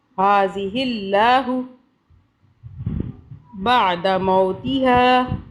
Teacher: ان یحیی ہذہ اللہ، اب اللہ کو باریک پڑھا، اللہ سے پہلے ہا کے نیچے زیر آ رہا ہے اس لیے باریک پڑھا